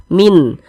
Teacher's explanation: dibaca jelas tidak berdengung bunyi nunnya kita baca jelas Min jelas n-nya n-nya jelas tidak disamar-samarkan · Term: izhar syafawi